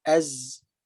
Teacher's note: Kalau kita tengok huruf zai dengan huruf sin tu atas bawah tu, zai sifatnya jahar atau jahrun, jelas. Tertahan nafas ketika menyebut huruf zai.